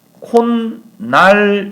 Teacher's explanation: 뒤에 오는 니은 때문에 역행동화 앞에 것이 비음화가 되어서 최종적인 발음은 니은이 첨가된 것처럼 보인다라는 거예요. 그래서 현상적으로 콧날을 발음할 때 최종 발음이 니은이 들어갔으니까 니은이 첨가되면 사이소리구나라고 알게 되지만 실제로는 니은이 들어간 것이 아니라 디귿이 먼저 첨가가 되고 그 다음 비음화 때문에 니은이 들어간 것처럼 보이는 거예요.